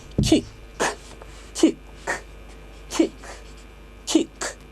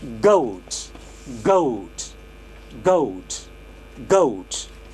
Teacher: the first one, which is k, is voiceless, and the second one is voiced